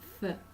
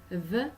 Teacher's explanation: th is unvoiced, while the is voiced